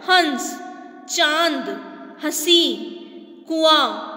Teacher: जब उच्चारण के समय वायु मुख के साथ नासिक, मतलब मुंह से भी हवा बाहर आएगी और नाक से भी आएगी, तो वह अनुनासिक स्वर कहलाता है